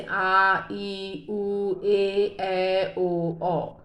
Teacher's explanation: जिन स्वरों के उच्चारण में ह्रस्व स्वर से 2 गुना समय लगता है, 2 मात्राओं का समय लगता है, उन्हें हम दीर्घ स्वर कहते हैं